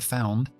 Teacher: grupo consonántico al final de Found nt importante pronunciar las dos cosas